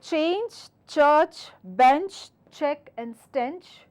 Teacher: There is a little friction against the front teeth as the air hits it. This is a voiceless sound and do not vibrate it with your vocal cords.